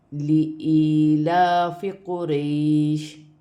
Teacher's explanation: پہلے زبر آ رہی ہے تو یا لین بنتا ہے، اسے کھینچتے نہیں ہیں